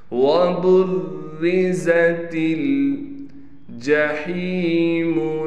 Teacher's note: را کو بالکل باریک پڑھیں گے اس لیے کہ را پر تشدید، را کے نیچے زیر ہے اور را پر تشدید ہونے کی وجہ سے تھوڑا ٹھہراؤ کیا جائے گا۔